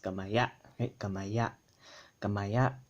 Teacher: don't forget that it has a glottal stop at the end